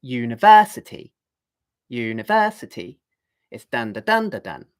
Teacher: 5 syllables. The accented syllable is 1, 2, 3. It's the third syllable.